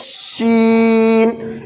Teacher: इसमें जुबान के बीच का हिस्सा तालु में लगाएंगे, ऐसे कहेंगे शीन, इसको भी ज़्यादा खींचेंगे।